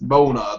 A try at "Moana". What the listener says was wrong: There's an A there. It's Moana.